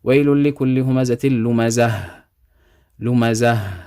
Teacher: if you stop on this ta marbuta, you're going to read it as a ha. You're going to read it as a ha with a sukoon.